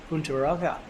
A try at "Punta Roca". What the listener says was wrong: Mitch Salazar would be devastated with your pronunciations there. He's very particular about the rolling R's.